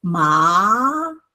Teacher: Now 3 to five represents the second tone. It goes from the lowest to the highest